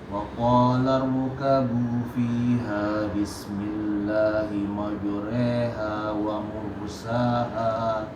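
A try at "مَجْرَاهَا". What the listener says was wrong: Jimnya masih tebal, qalqalahnya maju, bukan maju. Coba maju. Majri. Coba majri.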